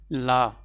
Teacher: जीभ का जो अगला हिस्सा है वो मसूड़े को स्पर्श करता है, तो इससे क्या हो जाता है, जो मुख से वायु बाहर निकलनी होती है उसका मार्ग जो है बंद हो जाता है। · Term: पार्श्विक व्यंजन